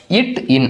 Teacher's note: நாவினுடைய நுனிப்பகுதி, அன்னத்தினுடைய நுனிப்பகுதி